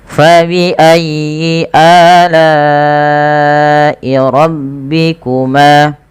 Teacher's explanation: la-nya dipanjangkan sepanjang 4 atau 5 harokat dan kita hukumi dengan mad wajib muttasil